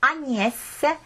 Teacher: Ja Agnes on nagu selline hästi pehme N